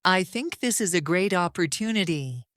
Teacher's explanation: The ending is strong. The pitch falls cleanly.